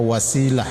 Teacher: ketika di waqaf ta itu menjadi ha disebut ta marbutah, maka dibaca wasilah.